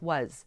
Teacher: the vowel sounds like ah and I don't really exaggerate that last sound it's kind of lost